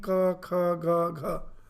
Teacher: The middle of the tongue is touching the palate. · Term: ka varga